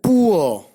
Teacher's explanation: Ua is a glide from a centralized back rounded vowel just above half close to a central unrounded vowel between half close and half open if the diphthong is non-final. If the diphthong is final, the glide is in the direction of a central unrounded vowel just below the half open position.